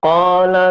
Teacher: Alasannya huruf alif didahului fathah. Cara membaca huruf qaf dibaca sepanjang 2 harokat. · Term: mad tabi'i